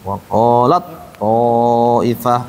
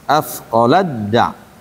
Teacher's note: to-nya ada tasdidnya. Berarti taknya ngilang sama sekali. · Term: idgham